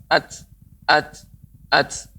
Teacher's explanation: ta itu ketika disukunkan mengeluarkan udara, ya, nafas